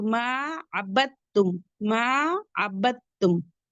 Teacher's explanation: Direct ब को ता से मिलाएंगे। दाल को बिल्कुल भी नहीं पढ़ेंगे। तो मा अब तुम मा अब तुम अबद तुम नहीं पढ़ेंगे।